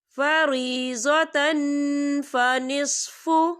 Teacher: تنوین کی آواز کو ناک میں چھپائیں گے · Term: اکفا